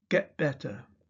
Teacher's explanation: Glottal replacement, particularly of t, is often heard in contemporary RP. If the consonant is followed by another consonant, when the t in get is followed by another consonant, we hear, for example, get better.